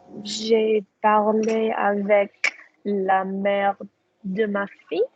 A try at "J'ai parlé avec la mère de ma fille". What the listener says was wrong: Flawless.